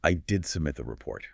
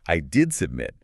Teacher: The stress is entirely on did.